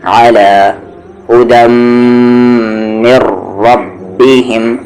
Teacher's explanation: را کو ہیوی کریں گے می کو را ملاتے ہوئے بھی, اور جب را کو دوبارہ ریپیٹ کیا جائے گا تب بھی.